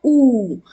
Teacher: Pronunciation is like oo, double O in moon in English. As you stretch your sound of double O, oo. That's how you pronounce the long vowel wow in Arabic.